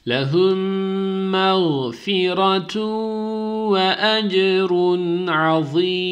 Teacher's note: mim harfini bir elif miktar tutup ses genizden gelecek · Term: malgunne